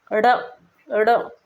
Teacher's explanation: इनका उच्चारण करते समय हमारी जीभ हमारे तालु को छूते हुए एक झटके के साथ नीचे की तरफ आती है। देखो, उच्चारित करके देखो, ड़ ड़ एकदम झटके के साथ नीचे आ रही है, ठीक है ना। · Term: उत्क्षिप्त व्यंजन, उच्छिप्त व्यंजन